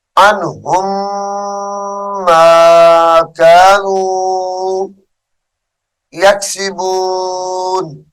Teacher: عنہم کی میم ساکن کو چھوڑ دیں گے اور ہا کو میم مشدد کے ساتھ ملا کر غنہ کریں گے